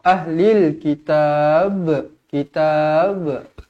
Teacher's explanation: Kalau kita nak berhenti dekat sini ahlil kitab, pastikan dibaca melantun. Qalqalah kubra.